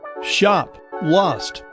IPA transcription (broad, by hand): ʃɑp, lɑst